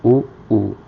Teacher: हमारे ओष्ठ दोनों पास में जाके मिल रहे हैं। तो उस प्रकार हम समझ सकते हैं कि छोटा ऊ और बड़ा ऊ का उच्चारण स्थान ओष्ठ होता है।